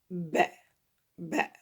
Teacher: al-ba, c'est les deux lèvres, ça se touche et on ouvre